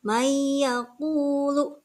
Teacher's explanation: ada huruf nun nun mati ke depannya ada huruf Iya nunnya tidak dibaca seolah-olah tidak ada n langsung kepada ada huruf ya dan kemudian itu disertai dengan guna